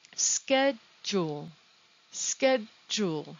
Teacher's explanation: The odd thing about this word is that the SCH sounds like an SK, ske. Also, the DU sounds like j, j, like an American J.